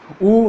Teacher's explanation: ओष्ठ से होता है। जब अपन इनको बोलते हैं ऊ, तो अपने होठों की आकृति क्या हो जाती है? गोल हो जाती है।